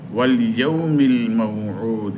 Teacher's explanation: ইয়াউম হরফে লিন তাড়াতাড়ি হবে। ওয়াল ইয়াউমিল, ইয়াউ হরফে লিন, আল মাউ হরফে লিন, উদ 3 আলিফের মধ্যে আরদি এবং কলকলা আছে শেষে।